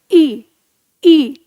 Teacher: जीभ के अगले भाग से उच्चारण और तालु के नीचे वाइब्रेट होगी। · ई का उच्चारण स्थान तालु स्थान से बताया गया है, और जीभ के प्रयोग के आधार पर अगला भाग